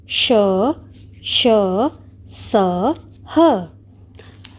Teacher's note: इन वर्णों के उच्चारण के समय हवा के रगड़ खाने से मुख में गर्मी यानी ऊष्मा उत्पन्न होती है, अतः इन्हें ऊष्म व्यंजन कहा जाता है।